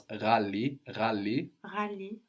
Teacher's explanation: So this GH sound is pronounced like with a little throat friction